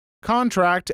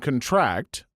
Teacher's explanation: Words that are spelled the same but pronounced with emphasis on different syllables are actually indicative of the part of speech it is. Stress on the first syllable is a noun. Stress on the last syllable is a verb.